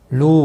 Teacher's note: واو مدہ ہے، ایک الف کے برابر کھینچ کر پڑھیں گے